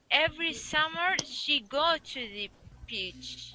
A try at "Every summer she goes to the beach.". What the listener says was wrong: She goes. Make sure to pronounce that S at the end of goes. So she goes to the beach.